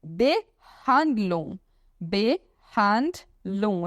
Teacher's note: E a palavra Behandlung, Behandlung, eu não falo G, tá? Behandlung é tratamento.